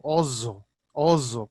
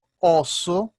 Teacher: o s só é sonoro e duplo esse é surdo